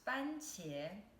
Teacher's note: fancier is first tone and then second tone